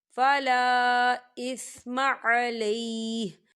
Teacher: الف مدہ بھی ہو رہا ہے اور اس میں مد بھی ہے، تو ہم اسے 4 حرکت کے برابر کھینچ کے پڑھیں گے